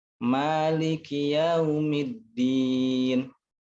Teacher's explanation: Kaf itu ada sedikit udara keluar ya.